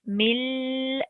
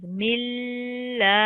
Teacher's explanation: you have to hold it for 2 seconds, mil, and then you go up for 2 seconds, milla. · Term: Shadda